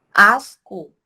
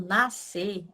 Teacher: Já na palavra nascer, quando eu falo nascer, eu também tenho o encontro do S e do C na palavra, porém eu não tenho o som do C, eu só escuto o som do S. Então, asco não pode ser considerado um dígrafo, porque eu consigo ouvir cada uma das letras.